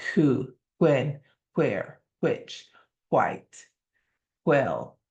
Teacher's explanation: there has to be a sense of air being pushed through when it's that WH.